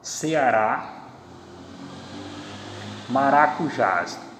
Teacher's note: o que faz com que elas sejam oxítonas é terem a tonicidade na última sílaba. Então eu tenho aqui Ceará, maracujás, independente da última sílaba TS ou não.